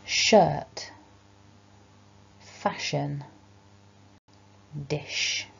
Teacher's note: we're letting out air over the tongue through that gap as we make the sound, and we're not vibrating the throat. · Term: sh sound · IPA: /ʃ/